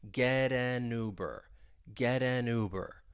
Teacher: The final T in get, you'll hear me pronounce it as a flap T that I can then link with the vowel sound in an.